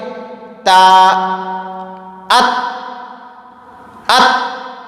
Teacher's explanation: زبان کی نوک اور ثنایا علیہ کی جڑ، یہاں سے تا ادا ہوتا ہے